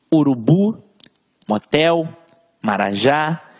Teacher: veja que a sílaba tônica está sempre na última sílaba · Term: oxítonas